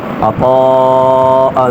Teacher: تنوین میں غنہ ہوگا، ناک میں آواز لے کر جائیں گے